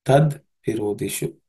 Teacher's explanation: The shu and u becomes shu, a longer u, because of sandhi. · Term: longer shu